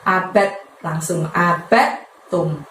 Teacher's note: Nah, setelah abidum ada lafadz ma yang panjangnya 2, lalu ditutup dengan lafadz abadtum. Di situ buka abadnya itu bukan kol-kolah ya, jadi tidak perlu dimantulkan, tapi masukkan ke huruf ta.